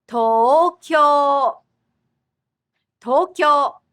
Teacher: Tokyo has 2 doubled vowel sounds, so it's a total of 4 syllables.